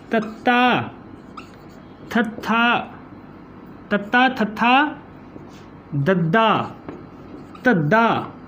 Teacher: हुण इन्हां दा उचारण है जिहड़ा ओह तुसीं उचारण करके वेखो, इहदा उचारण करोगे तो ये जिहड़ा साडी जीभ है बिल्कुल जिहड़ी वो जीभ दा अगला हिस्सा है जिहड़ा वो साडे उपरले दंदां दे नाल जिहड़ा आवाज़ नूं रोकण दे विच साडी मदद करदा है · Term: दंती धुनियां